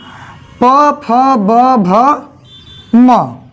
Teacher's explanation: ठीक, अब उसी प्रकार देखेंगे हम प, फ, ब, भ, म। ठीक है, प जब तक ओठ नहीं सटेगा तब तक इसका उच्चारण नहीं होगा।